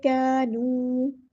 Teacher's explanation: تیجارتہم وما، الف مدہ ہے، ایک الف کے برابر لمبا کرنا ہے، کانو، کا باریک ہے، پھر الف مدہ آ گیا، کانو، واؤ مدہ آ گیا ہے تو ایک الف کے برابر لمبا کرنا ہے